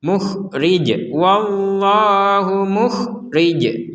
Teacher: ketika berhenti maka huruf jimnya ini menjadi sukun kalau jimnya menjadi sukun maka dipantulkan